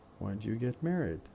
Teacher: the stress pattern for this question would be strong weak weak weak strong weak